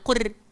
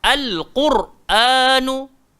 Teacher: Jadi qaf tu dia berbaris depan, kita kena baca dia tebal. Tak boleh baca qur. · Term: tafkhim